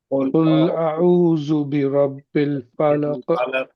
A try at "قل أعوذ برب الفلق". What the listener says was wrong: ہاں دیکھیے قل اعوذ نہیں ہونا چاہیے، زال زائی نہیں ہے بلکہ ذال ہے، ذال۔ قل اعوذ برب الفلق